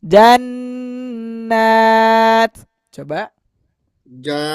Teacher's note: A-nya dipanjangin, Jan. N-nya juga dipanjangin tiga ketukan lambat dan karena ada tanda fathah berdiri di atasnya maka any-nya berbunyi panjang dua harakat.